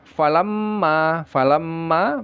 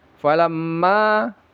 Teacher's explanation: Mim yang bertasydid digunahkan. Jangan lupa ya lama ya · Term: ghunahnya